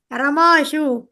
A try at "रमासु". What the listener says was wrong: அந்த இடத்துல ஷூ இருக்கு இல்லையா? அது ஷூன்னு இருக்க கூடாது, சு அப்படின்னு இருக்கணும். ரமா சு. ஆமா, ரமா சு.